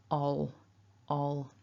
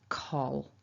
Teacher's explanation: because the l is there at the end of this syllable after the vowel, it might feel like it's happening further back in your mouth, ol, ol. So it's almost like you're swallowing that sound, a dark L, coal.